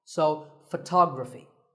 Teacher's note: We say photograph, but photography. So the first syllable becomes ph, and the stress goes to the second syllable